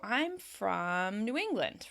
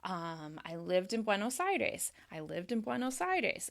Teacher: I drop at the end. So there is a fall at the end of the sentence. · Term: Falling intonation